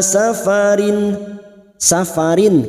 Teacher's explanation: kasrat tanwin dibaca jelas tanpa mendengung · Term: izhar halq